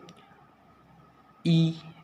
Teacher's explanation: देखिए आपकी जीवा आगे की ओर हो रही है, आगे आ रही है। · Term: अग्रस्वर